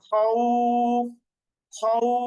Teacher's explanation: ফা এর উপর থামলে তখন আমাদেরকে এই খও এটাকে একটু টেনে থামতে হবে খউফ খৌ এরপরে বাই ইয়া জবর বাই জবরের সাথে জমেলা ইয়া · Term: লিনের হরফ